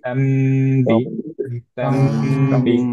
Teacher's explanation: বি তে টান হয়ে যাচ্ছে, এটা যাতে না হয়, লাস্ট লেটারে যাতে এক্সট্রা টান না আসে · তামবি নুন সুকুনের পরে বা আসছে, এর জন্য মিম দিয়ে রিপ্লেস হয়ে গেল উইথ গুন্না। খেয়াল করতে হবে, তাম ধরে রাখতে হবে, অনেকেরই আমি সমস্যা দেখছি এটা।